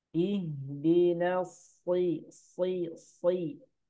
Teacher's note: Huruf sod keluarnya sama dengan huruf sin. Yakni ujung lidah dengan ujung gigi.